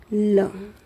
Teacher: ल का जब हम उच्चारण कर रहे हैं तो क्या हो रहा है, ये ध्वनि दोनों तरफ से बाहर आ रही है। श्वास जो होती है ना वो जिह्वा के दोनों पार्श्व से बाहर आ रही है, पार्श्व से बगल से बाहर आ रही है। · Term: पार्श्विक व्यंजन